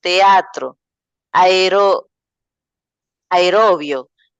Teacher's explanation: la secuencia de dos vocales que no se pronuncian dentro de una sílaba sino que forman parte de la sílaba consecutiva